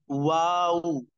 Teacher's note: लिए जाए वाऊ दोनों हो गोल होते हैं ऐसे वाऊ यानी होठ पहले गोल फिर थोड़ा सा खोलते हैं फिर उसी कैफियत में वापस लट जाते हैं तो वा इंग्लिश